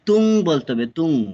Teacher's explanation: তাহলে এখানে পড়ছি, এখানে নরমালি আছে মুসফিরাতুন, তা তা টু দাম্মাতুন, কিন্তু আমরা জানি তানবিনের লেফট সাইডে দোয়াত থাকলে এখানে সাউন্ড হাইড করতে হবে, ডু নট ক্লিয়ারলি, তাই এখানে পড়তে হবে তুং, লাস্টে নুনের সাউন্ড হবে না এখানে, ঠিক আছে, এখানে তুং ইএনজি লেটার সাউন্ড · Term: ইখফা